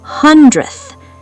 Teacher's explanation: In real speech, the D sound literally vanishes. It gets crushed.